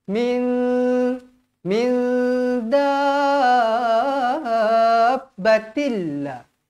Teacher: [Musik] wakaayyim nampak mim sabdu Terus masuk wakaayyim Min Nun bertemu Nun kosong bertemu Dal hukumnya ikhfa Hakiki dibaca dengung dua harakat